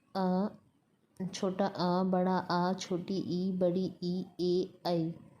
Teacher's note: ख है अवृत्तमुखी स्वर, इन स्वरों के उच्चारण में ओष्ठों को वृत्ताकार नहीं बनना पड़ता।